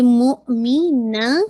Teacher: ना को आपने 2 काउंट पढ़ना है हमजा पे झटके के साथ